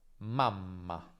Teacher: Il suono viene semplicemente allungato, quindi confronta mama con mamma. In mamma la m è più lunga e la vocale prima è più corta. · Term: geminazione